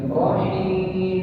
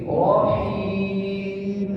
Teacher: Jadi bukan rohim, tapi rohim, jernih bunyinya, tidak mengalir ke hidung